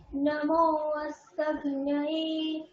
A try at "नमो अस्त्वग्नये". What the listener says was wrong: অস্ত্বগ্নয়ে ত্ব, হ্যাঁ, অস্ত্ব তয় বয় আছে, ঠিক আছে।